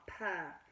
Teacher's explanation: It's an unvoiced sound, so make sure you don't add what's called the schwa. P. We're not putting a P.